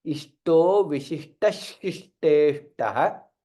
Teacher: Vishishtah, visarga is there, then shishteshtah. Since visarga followed by shakara, there will be additional shakara that comes. Hence, it is shishteshtah, double sha there.